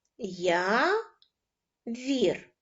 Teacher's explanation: поділимо слово явір на склади я вірю наголошеним буде перший склад я